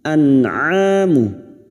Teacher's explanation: Nun sukun atau tanwin yang bertemu dengan 6 huruf ini maka bunyi nun sukun dibaca jelas tanpa mendengung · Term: idhar halki